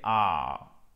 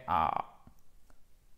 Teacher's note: une voyelle longue, d'accord, qui est celle-ci en phonétique, c'est entre le A et le O, mais c'est un petit peu plus près du A